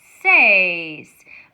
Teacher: my e is strong and it overpowers that I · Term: diphthong